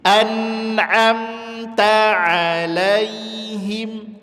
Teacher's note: Anamta dan ain huruf tipis jangan dibaca anom.